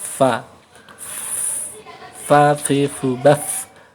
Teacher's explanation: Kemudian yang ke-15 adalah bagian tengah dari bibir bawah dengan ujung dua buah gigi yang atas adalah tempat keluarnya huruf fa.